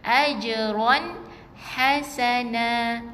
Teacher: Ini bukan ajran, ajron. Jim ni ada qalqalah yang kecil Okey, lantunan yang ringan saja, bukan jadi tersekat bacaannya.